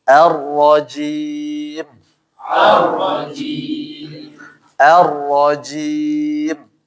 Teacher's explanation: Di ro itu dari mana dia? Dari ujung lidah ya. Sama gusi bagian atas, tapi yang depan sebenarnya. Jadi dia bukan dari bibir itu, bukan dari syafaten ya.